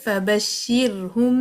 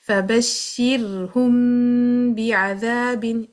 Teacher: آپ نے ہونٹوں کو بند کیا میم کے لیے لیکن جب کھولا تو با نکلا. فبشرہم بعذاب، اس طرح میم با کے پیچھے چھپ جائے گا. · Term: اخفاء شفوی